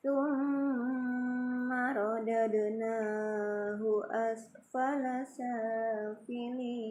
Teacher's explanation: di situ ada tasdid, mim bertasdid gunnah ya, didengungkan.